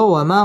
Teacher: মা মধ্যে তবাই এক আলিফ টেনে পড়তে হবে